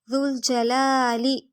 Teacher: ذا کو لام سے ملائیں گے، ذا بالکل نرمی سے ادا ہوگا، جیم کی زبر لمبی نہیں ہوگی، لام باریک، الف مد، ایک الف برابر لمبا ہوگا، نیکسٹ لام لمبا نہیں کریں گے اور باریک ہوگا۔